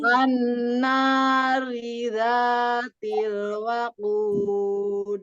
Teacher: kalau ro dengan harokat kasroh bacanya apa? Tipis kan? Ya, bacanya tipis, nggak boleh jadi tebal. An-nari dzatil waqud.